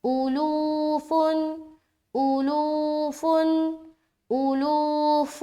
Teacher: لام وا پیش لو، لو میں کھینچ رہے ہیں